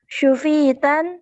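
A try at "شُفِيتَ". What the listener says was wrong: Nah, syufita bukan syufitan ya, syufita.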